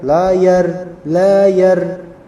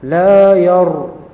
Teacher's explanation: La, dua harokat. Yar, ra-nya adalah ra yang mufakhamah, yaitu tebal.